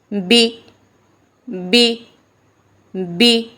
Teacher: होठों के गीले हिस्से को सख्ती से मिलाकर बारीक आवाज में पढ़ेंगे। बी बी बी ब की ज़ेर को मजहूल नहीं पढ़ना।